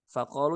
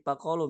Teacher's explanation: Jadi mereka ngomongnya F jadi P gitu ya. Fakolu jadi pakolu misalnya.